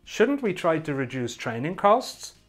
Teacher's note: hear the way my voice my intonation goes up at the end to make it a question